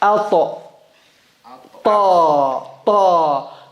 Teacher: tip of the tongue behind the front teeth, two front teeth